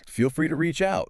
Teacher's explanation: You have to lift the pitch slightly on free and bring it down warmly on out.